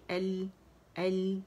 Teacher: لام میں توسط ہے کیونکہ ساکن ہے تو آواز ایک کاؤنٹ کے لیے چلے گی. حمزہ باریک ال.